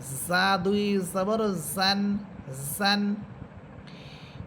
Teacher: নিচের দুই দাঁতের আকার সাথে লাগবে এবং ঝিঝি পোকার মত আওয়াজ হবে